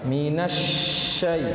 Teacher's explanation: Minasya, itu namanya tapasyi, udara menyebar dengan udara yang menyebar, ya. Jadi cara mengucapkan pada lafaz shin di sini harus ditekan terlebih dahulu, kemudian udaranya menyebar.